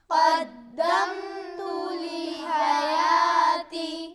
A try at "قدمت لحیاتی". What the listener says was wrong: حا کو اچھی طرح ادا کریں. قدمت لحیاتی.